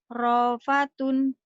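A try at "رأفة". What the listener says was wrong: Bukan. Iya, tapi bacanya salah. salahnya di mana? Ada hamzahnya neken ya coba. Ra'fatun gitu.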